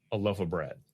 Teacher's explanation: We might just use the reduced vowel, our old friend schwa, instead of clearly saying the word of.